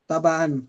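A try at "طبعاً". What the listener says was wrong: तबान का मतलब होता है तब, भाई एन निकालो भाई बाहर।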